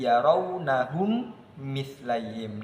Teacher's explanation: mim yang sukun yang pertama dimasukkan kepada mim yang kedua dan dibaca dengan dengung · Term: idgham mimi